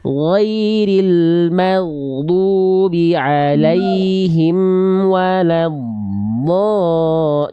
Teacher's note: Amnya jangan berhenti antara alaihim wala, jangan ada jeda.